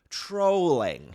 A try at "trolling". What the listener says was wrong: It's not trolling, it's trolling. You don't change the beginning, you don't change the first part of the word, how you pronounce it just because it's an ing. You still say it.